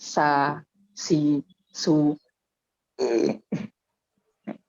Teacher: Bedanya sin sama sa itu di makharij, di sifat. Kalau sa atau sin itu dia makharij sifatnya tipis atau istifal.